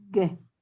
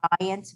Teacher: It's the one that's made in the back of the throat, G, right? As opposed to giant, which is in the front of the mouth. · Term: G sound